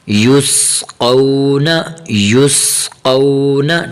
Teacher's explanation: سین کی آواز نکالنی ہے اور یہاں قاف کو موٹا کرنا ہے